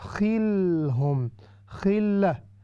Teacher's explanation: یہ لام کو ہم نے باؤنس نہیں کرنا، وی ڈو ناٹ باؤنس لام، تو اسی لیے اس کا دھیان رکھنا ہے ہم نے۔